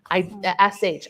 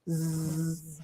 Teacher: Put your hand up to your neck and make the shh sound. SH, I don't feel any vibrating. But if I make the Z sound, zzz, I feel the vibration.